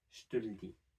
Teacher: we can drop the e in je and the e in le